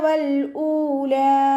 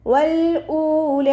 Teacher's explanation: വാവുച്ചരിക്കുമ്പോൾ ചുണ്ടുകളൊന്ന് circle ചെയ്ത് കൊടുക്കുക. നൂനിന് ശ്രദ്ധ വന്നിട്ടുണ്ട്, നല്ലോണം മണിച്ചു കൊടുക്കുക.